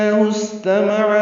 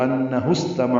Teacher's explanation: انہ میں نون مشدد پہ غنہ ہے، ہا کو الٹا پیش تھا، اس کو ملانے کی وجہ سے ہا کو استمع کے سین سے ملا دیں گے تو انہ استمع ہو جائے گا۔ سین ساکن پہ ہمس ہے، یعنی سانس اس میں جاری رہتی ہے۔ تا میم عین جلدی پڑھیں گے، عین وسط حلق سے ادا کریں گے۔